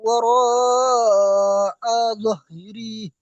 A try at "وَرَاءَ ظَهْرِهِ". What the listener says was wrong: এখানে টান হবে না লাস্টে। وأما من أوتي كتابه وراء ظهره এইভাবে।